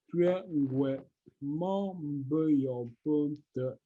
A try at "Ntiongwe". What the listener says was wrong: Ce n'est pas un tué, je dis que c'est un tio. Ntiongwe. Oui, Ntiongwe. Dis seulement Ntiongwe. Le mot c'est Ntiongwe.